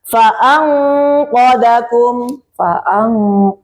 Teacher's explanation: sebenarnya qof qof itu rada dipantulkan karena nanti juga masuk di hurufnya qalqalah ya.